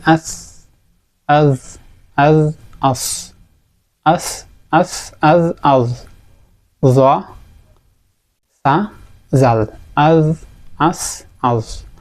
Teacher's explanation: যদি বলি আস সা জাল আজ এই তিনটা হরফ উচ্চারিত হচ্ছে জিহবার অগ্রভাগ এবং উপরের দুই দাঁতের অগ্রভাগ এই অংশ থেকে এই মাখরাজ থেকে উচ্চারিত হচ্ছে এই তিনটি হরফ